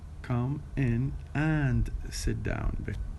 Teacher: because it was said in a very fast way, the d sound was dropped from the conjunction and